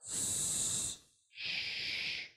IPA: s, ʃ